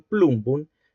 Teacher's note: el nasal bilavial sonoro, precede al oclusivo bilavial y lo modifica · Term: asimilación progresiva